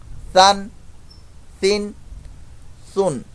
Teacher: آگے سا سین اور صاد کی ادائیگی کے اندر فرق ہم نے کرنا ہے۔ سا سافٹ لیٹر ہے تو اس میں آواز جو ہے وہ سی ٹی کی نہیں آئے گی، سا دو زبر سن، سا دو زیر سن، سا دو پیش سن، سن سن سن۔